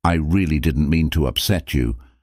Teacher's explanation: with heavy emphasis on the word really